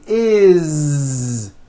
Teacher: we always add the ending is with a voiced Z is it doesn't matter that it's spelled with an S it's